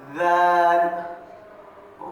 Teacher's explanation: ذال زبان کی نوک اور اوپر کے دانتوں کا کنارہ لگنے سے ذال